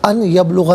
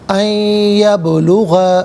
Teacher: یا کی آواز کو غننے کے ساتھ ادا کیا جائے گا